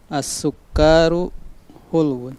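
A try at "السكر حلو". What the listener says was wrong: Kafnya ditasdid. Nah, kafnya ditasdid kemudian pendek. As-sukkaru.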